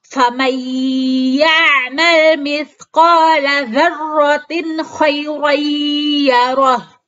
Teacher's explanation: nun sukun bertemu dengan huruf ya yang dibaca melebur ke dalam huruf ya dengan disertai gunnah, sehingga disebut dengan idgham bi gunnah. · kasrotain bertemu dengan huruf kha yang dibaca jelas atau idhar